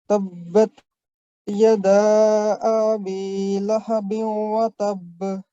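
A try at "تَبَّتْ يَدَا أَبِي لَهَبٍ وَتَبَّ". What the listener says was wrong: ये जो ना अभी आ को थोड़ा सा हमने लंबा कर दिया।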